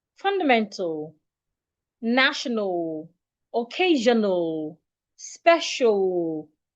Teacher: So when you have words ending in a l remember treat the a as a silent letter do not articulate it